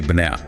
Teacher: The stress is in the middle on that n. So the vowels on either side would get crushed. They both become schwas.